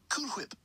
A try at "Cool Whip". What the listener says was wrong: You're saying it weird. Why are you putting so much emphasis on the H?